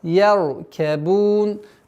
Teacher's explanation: Ра у нас твердая, я мягкая.